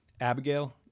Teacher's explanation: The I vowel in Abigail, most people do not fully pronounce it. It reduces to like a half vowel. It's not pronounced as a full I vowel.